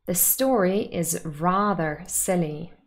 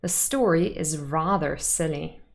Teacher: this is another example of emphatic stress on the word rather